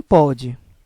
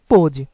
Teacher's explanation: diferente do acento agudo que nos proporciona um som mais aberto no circunflexo nós vamos ter agora um som mais fechado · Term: timbre fechado